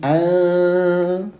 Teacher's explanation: Cara bacanya samarkan bunyi nun yang baris mati selama dua ketukan. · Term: ikhfa